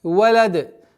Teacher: И появляется звук калкала. Так как даль относится к 5 взрывным звукам при остановке или при появлении сукуна, появляется свойство взрывности.